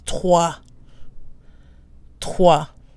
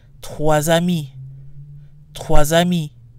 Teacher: when followed by a vowel however the S is pronounced in sounds like a Z twas I me quasi me so